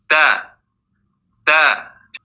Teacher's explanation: jahr artinya tertahannya nafas sehingga membaca da tidak boleh ada nafas yang mengalir